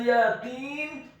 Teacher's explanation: huruf ya-nya dibaca tipis, fathah 1 harokat.